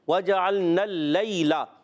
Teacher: یا ساکن سے پہلے زبر یالین ہے، نرمی سے ادا کریں گے. لام پر زبر آ رہا ہے وَجَعَلْنَا اللَّيْلَ. · لام مشدد، ذرا رک کر ادا کریں گے. یا ساکن سے پہلے زبر یالین ہے، نرمی سے ادا کریں گے.